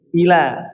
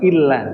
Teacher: ila bukan illa tapi ila tanpa ada tasdid. Jadi tanpa ditempel illa tapi ila yang benar ya lamain ulangin.